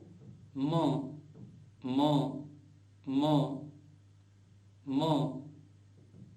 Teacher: म म भी ओष्ठ के साथ नासिका के संयोग से उसके नाद के संयोग से बोला जाएगा